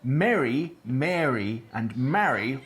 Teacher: Add an /r/ to the mix and for 60% population merge into [æ̝ɹ]. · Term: merger